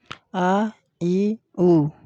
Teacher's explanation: जिनके उच्चारण में हवा केवल मुख से निकलती है, नाक से नहीं, उसे निरनुनासिक कहते हैं